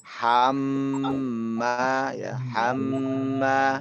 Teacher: Kalau mim dan nun ini bertasdid, harus dia berdengung. Harus lama dia ditekan.